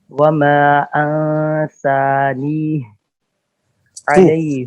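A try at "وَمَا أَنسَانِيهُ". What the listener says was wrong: انسانی ہو پڑھو نا پیش. انسانی ہی، خلاف قاعدہ ہو گئی.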